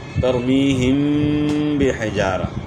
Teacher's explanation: ترمیہم یہاں یا مدہ ہے، اور یہاں ترمیہم بحجارہ، میم ساکن کے بعد با ہے تو اس لیے یہاں اخفا ہوگا ایک الف کے مقدار کے برابر